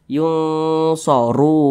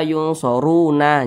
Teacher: Huruf nun tidak dibaca panjang, maka ketika kita berhenti maka kita sukunkan. Jadi dibaca yunsorun.